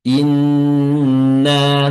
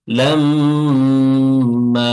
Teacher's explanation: Tapi di inna enggak langsung dilepas. Inna tidak tapi kita tahan dulu. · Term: tasdid pada nun dan mim